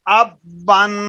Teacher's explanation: اخفا کرنا ہے، ناک میں آواز جائے